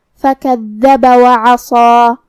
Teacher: صاد حروف تفخیم میں سے ہے، تو ہم اسے بھاری آواز میں پڑھیں گے، اور جو کہ اس کے بعد مد الف ہے، تو ہم صاد کو اور مد الف کو دونوں کو بھاری آواز میں ادا کریں گے. · کلمت عصا میں یہاں حرف العین کو ہم حلق کے درمیان والے حصے سے ادا کریں گے